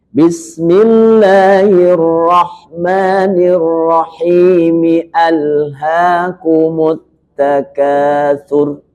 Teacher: ketika takatur hamzahnya tetap muncul walaupun disambung